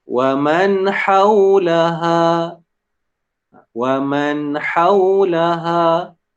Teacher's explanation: Dia baca secara sambung terus. Jangan ada saktah dekat man ni.